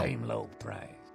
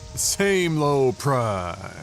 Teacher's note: I like how he gets like kind of the valley girl uh vocal fry.